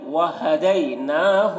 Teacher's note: وہدیناہ نون میں غنہ کر رہے ہیں